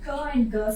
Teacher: How it is produced means you have to lift the back of the tongue, then the velar sound will be produced